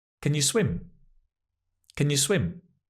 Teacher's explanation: It's almost like we're eating it. We've swallowed the can and the you, right? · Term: weak, unstressed form